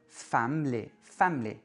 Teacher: dans un mot comme family, première syllabe accentuée · quand on a une syllabe au milieu du mot qui est réduite, on va avoir tendance à carrément l'effacer. On ne dit pas family, on dit family.